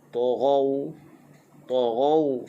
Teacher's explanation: Taghaw, ghaw tu adalah hukum lin, lembutkan.